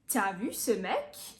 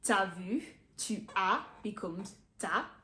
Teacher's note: Note the contraction in t'as vu, tu as becomes t'as.